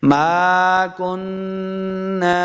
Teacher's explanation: کاف کو موٹا نہیں کریں گے، نون کے ساتھ ملانا ہے، نون کے اوپر شد ہے، نون مشدد ہے، تو اس کو غنہ کر کے پڑھنا ہے